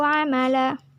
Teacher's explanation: Amala merupakan hukum bacaan mat iwat karena lam berharokat fathah tanwin dan diwakofkan. Cara membacanya tanwin dihilangkan dan panjangnya 2 harokat.